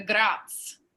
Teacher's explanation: a lot of the Italians dropped the final vowel